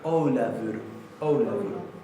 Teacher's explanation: Recuerden que esta F se pronuncia casi como si fuera una B corta